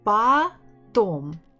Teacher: so stress on the second syllable